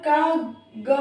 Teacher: अल्प प्राण कम हवा निकलती है बोलने पर